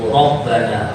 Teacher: di sini ada ro yang dibaca tebal atau kalau dalam bahasa tajwid itu tafkhim. Itu rabbana ro.